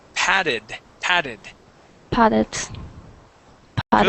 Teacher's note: with this word, the double T sounds like a D